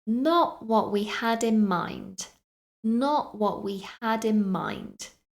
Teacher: so some more T sounds being dropped completely from those words